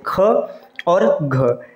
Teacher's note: जो दूसरा और चौथा व्यंजन होता है इसको महाप्राण कहते हैं